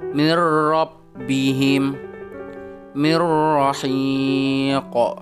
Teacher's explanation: Contoh huruf ro, ketika didahului oleh nun sukun, mirrabbihim mirrahiq. Suara nun sukunnya tetap dimasukkan ke dalam suara huruf ro, akan tetapi dia memasukkannya tanpa dengung. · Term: idgham bila guna